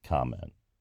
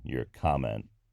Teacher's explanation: that's always pronounced with the initial syllable stress